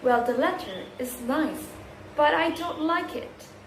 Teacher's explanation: The intonations rises and then falls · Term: rise, fall intonations